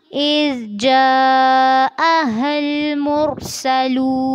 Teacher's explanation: इज़ में ज़ाल को नरमी से पढ़ना है, जा पे मत करनी है और हा को लाम से मिलाना है, लेकिन ध्यान रखना है कि लाम पर झटका ना हो।